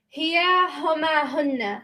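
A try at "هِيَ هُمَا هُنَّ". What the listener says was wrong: Excellent.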